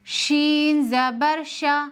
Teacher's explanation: شین میں بھی حروف مستفیلہ کی صفت ہے، اس کو باریک پڑھیں گے، جیسے شین زبر شا۔ شین کو جب بھی پڑھیں گے شین کی آواز منہ میں بکھر جانی چاہیے